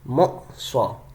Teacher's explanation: میں حمزہ پہ جھٹکا دے رہا ہوں، کیونکہ حمزہ ساکنہ ہے